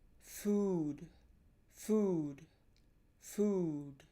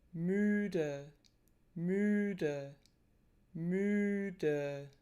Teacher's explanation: But oo is not quite as tense as the German ü and also the lip posture doesn't compare well. We tend to stick our lips outward into a kind of kissy face when we pronounce the oo in English as opposed to what we do in German for the ü vowel, which is more of a compression of the lips than a protrusion into that kissy face. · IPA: /y:/